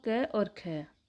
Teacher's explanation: जिन ध्वनियों का उच्चारण कहाँ से, कंठ या गले से होता है, वह कंठ ध्वनियाँ कहलाती हैं।